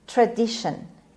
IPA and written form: trəˈdɪʃən (tradition)